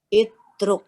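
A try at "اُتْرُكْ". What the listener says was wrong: Nggak ada itruk itu. Jangan i semua. Kalau tengahnya dhammah maka dia ikut dhammah depannya. Jangan i semua.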